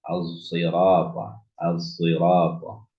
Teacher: Ketika membaca as-sirata bukan sirata, bukan gunakan shad, tapi campur dengan zai. Tapi lebih dominan shadnya. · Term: ismam